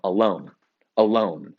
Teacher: do you hear how you're barely saying the uh and you're very much saying the loan